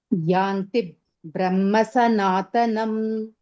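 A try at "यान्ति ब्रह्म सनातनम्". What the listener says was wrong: Brahma. Only Ma I can hear. Brahma Sanatanam.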